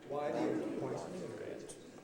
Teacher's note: Notice do is high. Why do you want to do it? Everything else low.